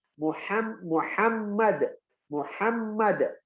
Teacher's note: Makharijil hurufnya ha di tengah tenggorokan.